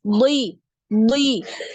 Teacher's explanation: ketika kasrah ya huruf DD ini tetap tebal ya tetap tebal jadi bunyinya bunyinya huruf d ini seperti ee ada W di